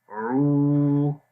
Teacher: اعو، آ کی آواز سمپل رہے گی، آ لمبا نہیں کریں گے۔ عو، عین کی آواز گلے کے درمیان والے حصے سے اور لمبا بھی کریں گے